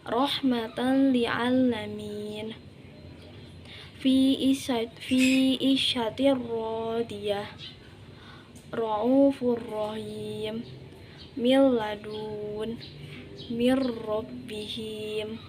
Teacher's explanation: memasukkan satu huruf ke huruf lainnya atau ke huruf selanjutnya dibaca tidak dengung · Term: idgham bilaguna